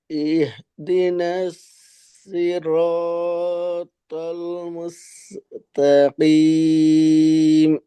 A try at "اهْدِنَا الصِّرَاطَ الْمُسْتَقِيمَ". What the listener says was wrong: জি, এখানে নাস, সদকে আর একটু পার্থক্য সিনের থেকে বোঝা যাচ্ছে। বাকি সদের উচ্চারণের জন্য আপনার এই এটা যথেষ্ট না। সই, নাসই, নাসই র, নাসই র, তল, যেহেতু পাশাপাশি সবগুলি মোটা, এটা আমাদের জন্য একটা সুবিধার বিষয়, সবগুলাকেই।